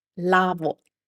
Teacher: make sure to not add a U sound to it, but just O